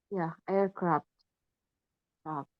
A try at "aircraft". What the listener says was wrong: Craft. Ada F-nya, terus baru FT. Aircraft. Jadi ada F ada T-nya. Ya, aircraft. Jangan kebalik ya. F dulu baru T. Aircraft.